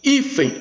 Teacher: Hífen, o N com som de I.